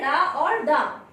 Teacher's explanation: इनके उच्चारण में जीभ ऊपर उठकर झटके के साथ नीचे गिरती है, अर्थात इनका उच्चारण करते समय जिह्वा तालु का स्पर्श करके तुरंत नीचे आ जाती है, इसलिए इन्हें कहते हैं उच्छिष्ट व्यंजन।